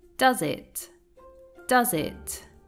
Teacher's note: he links the words does and it, and by doing so, the S sound morphs into a Z sound